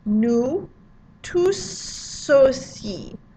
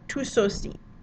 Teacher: you're going to make what we call a liaison in between those words, where you're going to overpronounce the silent consonant